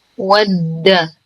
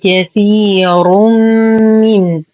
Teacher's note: نرقق الواو والدال ونشد الدال